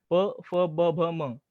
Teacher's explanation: निरोष्ठ रामायणामध्ये म्हणजे काय प, फ, ब, भ, म ही जी आपल्या मराठी किंवा संस्कृतमध्ये सुद्धा आपण त्यांना ओष्ठ्य व्यंजन म्हणून ओळखतो, की या अक्षरांचं उच्चारण करताना ओठांचा एकमेकांना स्पर्श होतो